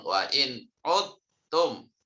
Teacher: Tetapi karena diidgham kan, maka suara dalnya masuk ke huruf ta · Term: idgham mutajanisen